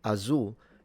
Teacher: she seems to have a dark L at the end. It didn't really sound fully inunciated.